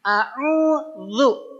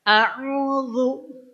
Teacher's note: zu itu ujung lidah ke ujung 2 gigi seri atas